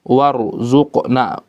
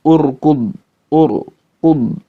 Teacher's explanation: kalau posisi ro yang berharokat sukun itu di awal setelah hamzatul wasl, fahiya mufakhomah, maka cara bacanya harus tebal, mutlakon, secara mutlak, ya, sepakat semuanya, mau bagaimanapun keadaannya.